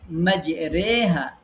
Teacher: এমালা হচ্ছে এটি আলিফ এবং ইয়া এর মাঝামাঝি ভাবে উচ্চারণ হবে। আলিফ আর ইয়ার মাঝামাঝি একটা উচ্চারণ হবে।